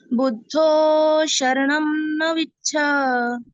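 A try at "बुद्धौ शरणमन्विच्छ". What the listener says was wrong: No. Buddhau. Sharanama. Is a full now. Ma is not half. Sharanama. You can put weight on it. Sharanaman vichha. Buddhau sharanaman vichha.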